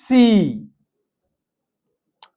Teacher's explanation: lips clearly spread, jaw nearly closed, tongue high front, long and steady e e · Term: e sound